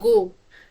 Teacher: This is a mid close back rounded vowel sound. Again, this is rounded.